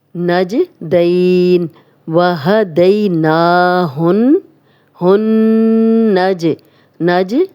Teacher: جیم پہ جزم آ گئی ہے تو جب بھی ان 5 حروف پہ جزم آئے گی تو ہم ہلا کے پڑھیں گے ، نجدین، وہدیناہن، ہن، نج، نج کلکلا والا حرف ہے جیم،